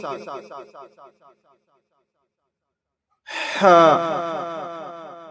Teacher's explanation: اس کو بڑی ہا کہتے ہیں جو حلق سے نکلتی ہے